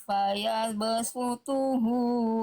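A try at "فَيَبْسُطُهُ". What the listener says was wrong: th tebalkan lagi sedikit angkat pangkal lidah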